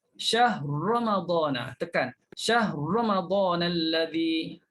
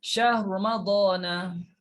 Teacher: matikan ra, masukkan dalam ra yang kedua · Hanya sentuh sedikit ra yang baris depan. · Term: idgham kabir, wajah ra